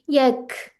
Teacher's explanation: जी ठीक है, सुकून यक नहीं करना, ठीक है, इसमें यक थोड़ी सी हम्स की साउंड आती है